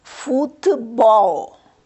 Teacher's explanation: Então, na última sílaba. A sílaba bol é a que se lê com maior intensidade. Por isso, se trata de uma palavra aguda.